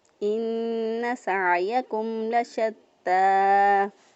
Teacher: نون مشدد پر ہمیشہ گنہ ہوتا ہے، اس لیے گنہ کی آواز کو ادا کرتے ہوئے نون کو ادا کیا. گنہ کہتے ہیں ناک میں آواز لے جانے کو، تو ناک میں 1 الف کے برابر نون کی آواز کو ٹھہراتے ہوئے ہم نے نون ادا کیا.